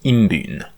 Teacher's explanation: the nasal in the first principal part would assimilate to the b. So most of the time it would come out as like imbin which is pretty good.